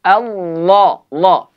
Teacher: Tinggikan pangkal lidah supaya bunyi dia tebal. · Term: taghlidh